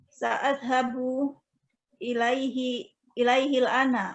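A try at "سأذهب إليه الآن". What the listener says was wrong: Iya, bagus sekali. Masya Allah.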